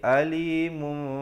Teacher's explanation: bibir itu sekadar bersentuhan saja dengan kadar panjang dua harakat